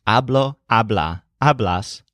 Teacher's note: the stressed syllable of most of these sounds like ah which is the first syllable of hablar